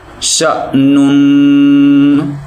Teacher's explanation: ہم ش کو جھٹکا دیں گے کیونکہ شین کے اوپر زبر جو ہے وہ حمزہ کے ساتھ مل رہی ہے اور حمزہ کے اوپر جزم ہے